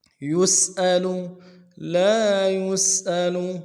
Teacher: سین کی سیٹی باریک ہوگی، حمزہ کو نرم سے ادا کریں گے، لام کو بھی نرم سے ادا کریں گے۔